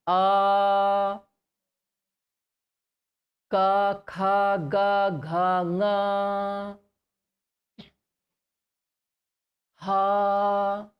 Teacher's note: See, all of these letters are pronounced from the same place, and that is this kantha. Okay, so the place or the sthana for pronunciation for ha is same as the entire ka group, as well as the letter or the swara a is also pronounced from kantha.